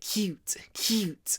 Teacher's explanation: before the T so it comes out like cute cute also because it comes between C and t two aspirated unvoiced consonants we almost aspirate the U and pronounce it with some extra a cute cute cute can